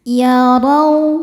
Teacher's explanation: Cara bacanya ditebalkan. Yarau, raw ada harfulin sebab ada waw sukun sebelumnya baris fathah. Cara bacanya dilunakan atau dilembutkan